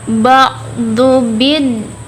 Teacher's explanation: Nah, di sana ada alif lam syamsiah, yang mana alif lam bertemu dengan salah satu huruf syamsiah, yaitu huruf dal. Huruf dal itu ditekan karena di situ ada tasydidnya di dal. Jadi ba'du din.